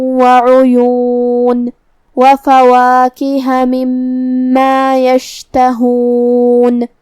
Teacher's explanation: عین کو ہم حلق کے درمیان والے حصے سے ادا کریں گے جو کہ اس پہ پیش ہے اور حرف الیا پہ پیش ہے، لہذا ہمیں یہ دونوں پیش کو ظاہر کرنا ہے.